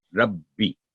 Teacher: یہ مجموعہ ہے رب اور بی، اس لیے ہم اس کو ٹھہر کے ادا کرتے ہیں ربی، یعنی ربی نہیں ربی.